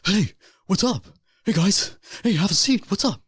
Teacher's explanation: he had that very breathy like talk